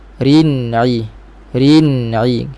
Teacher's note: Bila nun mati, ingat dia ada sifat tawassut. Dan sifat tawassut pada huruf nun mati berlaku, suara itu dia naik ke al-khayshum, rongga hidung. Rin-i, rin-i, rasa di hidung sekali.